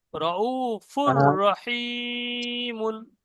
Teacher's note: জি দেখুন এখানেও তাই, দেখেন এখানে তানবিন এসছে, তানবিনের পরে র এসছে, রর উপরে তাসদিদ এসছে, তো এখানে দুপেশকে এখানে গুন্না করা যাবে না, বেলা গুন্না পড়তে হবে।